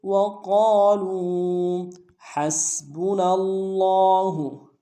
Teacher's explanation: ہا کو سین کے ساتھ ملانا ہے، سین کی سیٹی باریک ہوگی